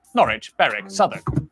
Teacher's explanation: W at the start of the final syllable is silent.